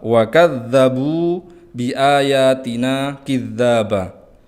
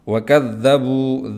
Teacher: dza yang bertasydid maka ditahan sejenak untuk memenuhi hak tasydid